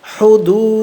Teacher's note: হলকের মধ্যখান হইতে উচ্চারণ হয়